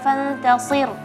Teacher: Fantasir karena ra-nya tipis, jangan sampai shadnya ikut juga tipis ya.